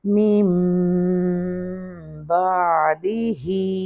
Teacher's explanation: हम नून को नहीं यहाँ पढ़ते, हम मीम पढ़ते हैं। असल में मिन बादी है लेकिन हम पढ़ेंगे मीम बादिही। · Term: इक़लाब